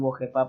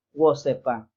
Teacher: en la variante central, la J es reemplazada por la S. Ellos no dicen wojepa para decir mujer, ellos dicen wosepa.